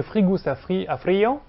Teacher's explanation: avec la chute de l'occlusive sonore en position intervocalique, cette chute étant due à la perte donc, de ce caractère occlusif ou approximant, du fait du caractère non entravé des voyelles.